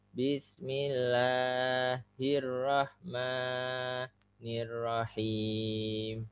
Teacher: Yang terakhir him boleh panjang, tapi yang bismillah itu 2 ketuk saja. Hirrahma itu sudah lebih.